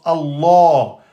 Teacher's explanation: Le nom d'Allah, toujours emphatique, sauf s'il est précédé de la voyelle kasra. Donc là, il n'est pas précédé par la voyelle kasra, donc on prononce Allah.